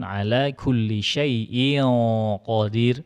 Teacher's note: Tanwin bertemu huruf qaf wajib dengung tebal.